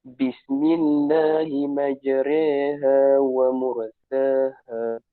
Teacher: Kita sebut huruf ra tu dengan bunyi re. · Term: ra mumalah